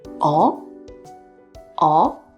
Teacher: it is said with the second rising tone.